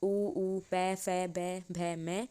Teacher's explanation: उपधमानिया ओष्ट्याः, इससे उच्चारण होने वाले उ प फ ब भ म उपधमानियः एषां वर्णानाम उच्चारण ओष्ठ स्थाने भवन्ति, इनका उच्चारण होठ से होता है।